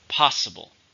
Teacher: How many syllables are in possible? 3. Stress on the first.